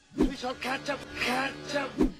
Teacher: Up is a preposition, which is an example of a function word. These words reduce and connect to content words, like catch. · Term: connected speech